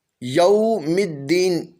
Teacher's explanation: الرحمن الرحیم، یوم الدین، یہاں پر واو ساکن سے پہلے زبر ہے، یہاں پر واو لین ہوگا، اس حرف کو نرمی سے پڑھیں گے، لمبا نہیں کریں گے، جھٹکا نہیں دیں گے۔